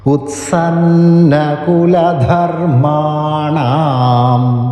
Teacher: അവിടെ അനുസ്വാരമുണ്ട് അത് ദീർഘമായിട്ട് അണാം എന്ന് ദീർഘമായിട്ട് ചൊല്ലി നിർത്തുക